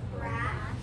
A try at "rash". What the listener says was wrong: Say it again, but don't say k. Say it again, but don't say k. So if I say crash, and then I tell you to say it again, but don't say k, the word is